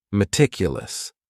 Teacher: That first syllable also has that schwa, that a sound, that reduced vowel sound.